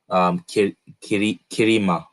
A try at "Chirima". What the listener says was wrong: That could probably be read as Chirima. really say Kirima. Yeah, we wouldn't pronounce it. The words would not come out as Kirima. It would probably be Chirima. I can make a chi sound.